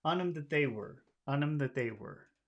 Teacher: all of these words on them that they were would just be one word